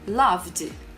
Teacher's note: Eu passo do som do V direto pro D. O E fica mudo.